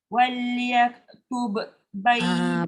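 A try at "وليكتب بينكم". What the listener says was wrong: Ba dengan ba tak boleh bunyikan qalqalah. Sebab dia nak jumpa sifat yang sama dengan dia. Waliyaktub bainakum.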